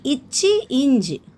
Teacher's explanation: இச்சு இஞ்சு நாவின் இடை அன்னத்தின் இடை.